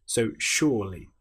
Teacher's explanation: Now the S-U here, you'll notice there's no H, but we're making the sh sound with the word sure.